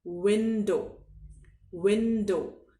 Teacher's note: डब्ल्यू में आप दांतों से होठों को नहीं दबाते, व करके इसका उच्चारण आप नहीं करते।